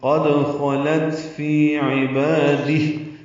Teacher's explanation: اگر وقف کرنا ہے تو قد خلت فی عبادی ہا ساکن ہو جائے گا اور اس پہ ہمس ہوگا · فی یا مدہ ہے دو حرکات لمبا کریں گے. عبادی میں عین وسط حلق سے ادا کریں گے